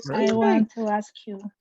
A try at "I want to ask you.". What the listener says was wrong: A la siguiente, ya no hacemos esa pausa cuando tengamos esa combinación, ¿verdad? No me pause y no me diga ask you. Ask you. Ask you.